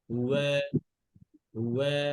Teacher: আচ্ছা, তাহলে ওয়া পড়ার সময় ঠোঁট গোল হবে।